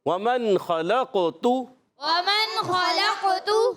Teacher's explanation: قلقلہ بھی ہوا، آواز لوٹ کر بھی آئی، عرف مستعلیہ میں سے موٹا بھی پڑا، اور قاف کا مخرج بھی بتایا زبان کی جڑ اور تالو کا نرم حصہ.